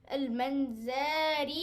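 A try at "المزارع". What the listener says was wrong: Not noon. It's not noon. It's a za, sir. Look at it, please. You don't stretch anything. You don't stretch nothing. Ra kasra and ya. There is a stretch.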